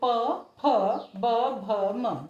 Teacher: जब हम इसका उच्चारण कर तो तो हमारे दोनों होठ आपस में मिलते हैं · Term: ओष्ठ्य